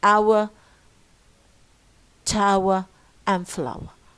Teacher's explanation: Ow plus schwa, it becomes hour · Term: trephthong